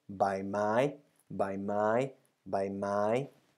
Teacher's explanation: a middle tone for the consonant and a middle and high tone for the marker word · itself has a middle tone bar and the maka word has two syllables middle tone and high tone